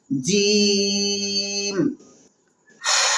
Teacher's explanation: جیم زبان کا پچھلا حصہ اور اس کے مقابل اوپر کا تالو، یہاں سے جیم، شین اور یا نکلتا ہے۔